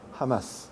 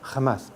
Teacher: la J mexicana, al contrario de la castellana, es muy suave, es decir, articulada con los alófonos aspirados H o XH. Así, en palabras como jamás, justo, ajo, etc., los mexicanos suelen aspirar los elementos consonánticos que en el centro de España se pronuncian con X. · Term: H aspirada